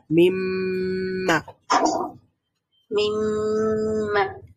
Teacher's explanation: আমাদের ঠোঁট দুইটা বন্ধ থাকবে, মিম যেমন উচ্চারণ করেছিলাম আমরা, নাক দিয়ে সাউন্ড প্রডিউস হয়েছিল, তেমনি এখানে একটু সাউন্ডটা দীর্ঘায়িত হবে, মানে একটু আমরা অপেক্ষা করব, কিছুক্ষণ অপেক্ষা করে তারপরে আমরা হারাকাতটা পড়বো, মিম। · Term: মিমের গুন্না